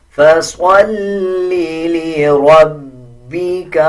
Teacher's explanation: اب لام پہ شد ہے، مضبوطی کے ساتھ لام کو پڑھا جائے گا. را کے اوپر زبر ہے.